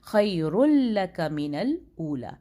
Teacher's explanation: تنوین پوری کی پوری مرج ہو گئی، لام کے اندر چلی گئی تھی، یہ مدغم ہو گئی، ادغام ہو گیا اس کا.